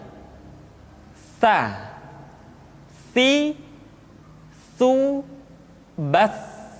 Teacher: Ta dikeluarkan dengan menyentuhkan ujung lidah kita dengan dinding dua gigi seri bagian atas. Diucapkan dengan suara dan nafas yang terdengar mengalir. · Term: huruf Ta